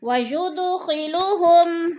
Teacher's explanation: وَيُدْخِلُهُمْ، وجود دال پر قلقلہ ہو رہا ہے، دال ساکن ہے اور حروف قلقلہ میں سے ہے تو اس لیے دال کو ہلا کر پڑھیں